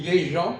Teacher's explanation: Tu dis les gens, tu ne prononces pas le S.